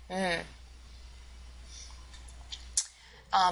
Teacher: you're actually forcing the air through your nose to say that sound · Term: nasal sound